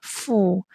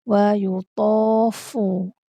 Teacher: Pastikan huruf fa ni dia ada angin sebab fa ada sifat hams. Okey, makhraj huruf fa, perut bibir sentuh kepada gigi kacip atas.